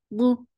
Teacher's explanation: For fatha, open your jaws. Bu, dad is heavy. For thamma, circle your lips. The sound is very short.